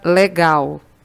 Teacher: a sílaba que a gente pronuncia com maior intensidade com mais força é a última sílaba é o gal na palavra marido a sílaba que você demora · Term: sílaba tônica